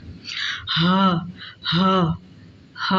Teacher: हा, हा, हा हरूफे हल्की में से, हलक वस्ते हलक, यानी गले के दरमियानी हिस्से से, गले के दरमियानी हिस्से से नहीं, इंतहाई हलक, हलक के सबसे नीचे वाले हिस्से से, यानी गले का जो सबसे नीचे वाला हिस्सा है वहाँ से उसकी आवाज़ निकलेगी।